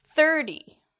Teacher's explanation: thir is louder and longer, and T is actually quite short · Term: stress